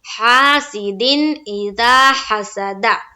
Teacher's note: نون کی آواز کو ظاہر کر کے بلا غنہ کے جلد پڑھنا ہے، بالکل رکنا نہیں ہے، ٹھہراؤ نہیں کرنا ہے، اسے ہم کہتے ہیں اظہار۔